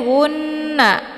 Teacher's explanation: dengan cara ditekan kemudian ditahan lebih kurang dua harakat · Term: ghunah musyaddadah